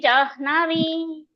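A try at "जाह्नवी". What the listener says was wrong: ಜಾನ್ಹವಿ first ನ ಕೇಳಬೇಕು ಜಾನ್ಹವಿ ಆಮೇಲೆ ಜಷಾಣ ದೀರ್ಘ ಇದೆ ಶ ಕೂಡ ಜಷಾಣ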